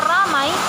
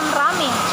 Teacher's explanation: perubahan dua bunyi vokal atau vokal rangkap dipotong menjadi Bunyi tunggal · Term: monoftongisasi